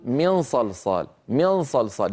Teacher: ينتقلون من الميم من كلمه من الى الصاد الى مخرج الصاد مباشره ولكنهم لا ينطقون الصاد الا بعد غنه قليله من صلصال من صلصال هذه الغنه القليله في الكلام العادي اليومي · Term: غنة قليلة